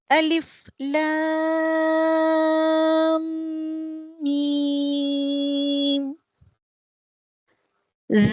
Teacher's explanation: جب لام میم کے پر ختم ہوتا ہے اور میم شروع ہوتا ہے تو ان دونوں کے درمیان غنہ کرنا چاہیے